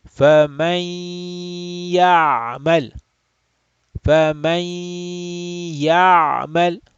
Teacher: we will have idgham bi gunna here. Idgham with stretching of the nasal sound.